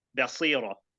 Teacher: I said basira with a ba with a sharp fatha.